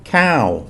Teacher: the cow word with a long vowel and a falling tone, cow, means rice.